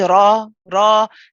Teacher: my lips are not pushing out, they're not protruding, and they are not going into any kind of circular shape. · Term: heavy ra